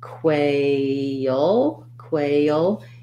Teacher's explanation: a dark l which will have a little bit of a schwa in front of before it · So quail, you're going to be long because of that diphthong A. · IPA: kweɪ-əl